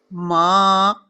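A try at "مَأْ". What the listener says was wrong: جھٹکا تو نہیں لگ رہا؟ آپ جا کے بس رک رہی ہیں. ما ما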